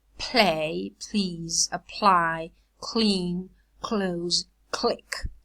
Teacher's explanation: this clear is devoiced when it's preceded by aspirated voiceless plosives in stressed syllables · Clear O is produced with the tip and blade of the tongue articulating with the alveolar ridge, of course, and at the same time the front of the tongue goes in the direction of the hard palate, and that gives the lateral a front vowel resonance. So it resonates like a front vowel. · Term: clear allophone